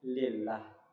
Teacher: Sini kalau dia berbaris kasrah sebelumnya maka dia tipis menjadi lillah. Kalau dia berbaris fathah sama dhammah maka dia tebal.